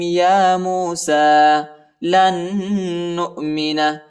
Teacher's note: سین کے اوپر جو ہے کڑا آیا ہے اور یا پر حرکت نہیں ہے، یا کو نہیں پڑھنا